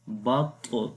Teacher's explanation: we will make qalqala sound, and also we will read this Ta in heavy sound